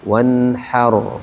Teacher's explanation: Dia sebelumnya ro sukun, sebelumnya fathah. Berarti ro-nya tebal. Jangan wanha.